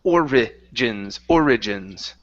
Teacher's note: So you're missing that second vowel.